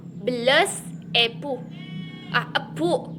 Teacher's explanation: Huruf E adalah vokoid tengah, tak bulat dan semi tertutup.